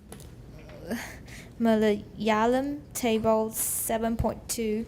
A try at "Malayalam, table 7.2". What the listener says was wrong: Leave a little more of a pause there.